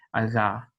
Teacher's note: it's a velar fricative, voiced velar fricative, which would be aga.